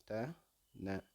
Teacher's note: த ந பல்லினது அடியை நாக்கின் நுனி பொருந்ததலால் இவை உண்டாகின்றன. பல்லினது அடியை நாக்கின் நுனி டச் பண்ணும்.